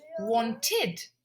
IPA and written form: ˈwɒntɪd (wanted)